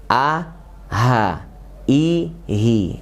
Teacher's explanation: Jadi a sama h ini makronya sama, yaitu di pangkal tenggorokan. Bisa kita rasakan a, h, i, hi, hakaza ya. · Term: h besar